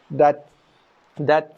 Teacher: dat tekan dulu baru lepaskan nafas sikit